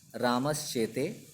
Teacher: पहले आए हुए स का परिवर्तन या विकार श के रूप में हो जाता है